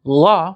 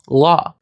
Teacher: the voiced palatal lateral approximant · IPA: ʎ